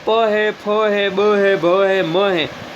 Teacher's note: ये जो वर्ड है ये किससे बोले जाते हैं, ओष्ठ से बोले जाते हैं